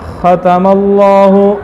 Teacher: خا کے اندر صفت حمز ہے. ٹھیک ہے. نرم ہوگی. خا سخت نہیں ہوگی